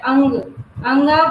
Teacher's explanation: अयोगवा। और जो ये अयोगवा कहलाता है और इसका उच्चारण नाक से होता है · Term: अनुस्वार